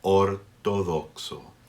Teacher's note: O, another pure vowel. Ortodoxo. Each O only has one sound.